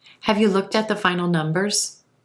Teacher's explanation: look at with that t sound coming over in front of the word at